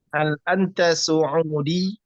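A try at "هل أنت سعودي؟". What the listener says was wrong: Harus ada semacam tarikan di akhir. Saudi, Sudani, ya, seperti itu. Dan ketika berbicara bahasa Arab itu ketika berhenti sama seperti kita membaca ya Al-Qur'an atau yang lain, diwakafkan, disukunkan.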